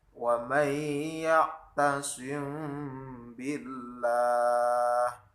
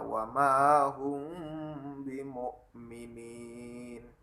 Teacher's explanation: artinya huruf mim bunyinya samar antara mim dan ba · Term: ikhfa syafawi